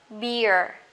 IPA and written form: bɪə (beer)